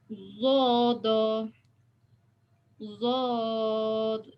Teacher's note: lidah kita tepi, kiri atau kanan lah, tepi ya, kiri atau kanan, kenakan dekat gigi atas. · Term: sifat istitolah